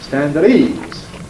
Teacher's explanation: Indeed, Americans, some Brits, will voice that T